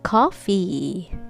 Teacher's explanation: touch your lower lip to your upper teeth and it's non-voice